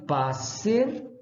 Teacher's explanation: Tem sempre o valor de uma sibilante surda.